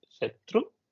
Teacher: And the Tru in the Shatru should be high.